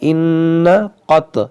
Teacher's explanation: یہاں پر دیکھیں نون مشدد ہے، اس میں غنہ کریں گے